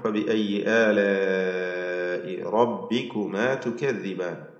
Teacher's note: മദ് മുത്തസിൽ വാജിബ്, നൽകി അലിഫിനെ നാലോ അഞ്ചോ ഹറക്കത്തിന്റെ അളവിൽ ദീർഘിപ്പിക്കൽ നിർബന്ധമാണ്